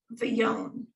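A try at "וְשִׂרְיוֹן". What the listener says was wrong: So except there's no v there. So vasir yon, yeah.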